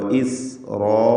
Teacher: സീനിന് സഫീർ എന്ന സിഫത്തുണ്ട്. ഇസ് എന്ന് പറയുമ്പോഴുള്ള ശബ്ദമാണ് സഫീർ. റാഇനും അലിഫിനും തഫ്ഖീം.